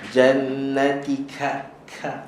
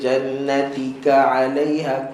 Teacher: ka tanpa ada angin